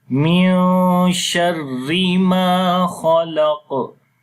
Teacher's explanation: Kha we read in heavy sound. On the Qaf we read heavy sound, and also we make Qalqala.